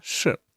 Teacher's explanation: this is fourth tone 是 it's like you scold someone